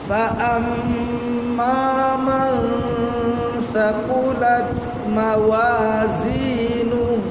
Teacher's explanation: নুনের মাখরাজ থেকে সায়ের মাখরাজের কাছে আনতে হবে, হালকা উচ্চারণ করতে হবে। মানে ইখফার হরফ ওইদিকে যেন নুনের উচ্চারণ ইখফার হরফ যখন আসে তখন মাখরাজ থেকে হবে না, তখন আসলি হরফ থাকবে না, ফরঈ হরফ হয়ে যাবে।